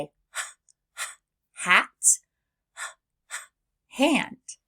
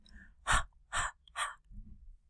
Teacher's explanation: I simply open my lips and let the air flow from the back of my throat. My voice is off and the sound glides right into the next letter.